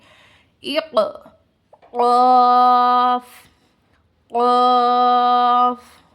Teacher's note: جو اپنی زبان ہوتی ہے اس کی جڑ کی ابتدا اور اس کے مقابل اوپر کی تالو سے ادا ہوتے ہیں